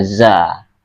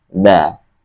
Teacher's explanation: huruf zai bacanya biasa seperti z. Tapi ini dal, dia harus di tengah-tengah antara gigi, lidah kita di antara gigi.